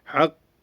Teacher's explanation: sert bir şekilde Hakk diye duruluyor kalkalı yaparak